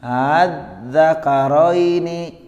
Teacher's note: Tashil di sini hamzah yang pertama dibaca jelas.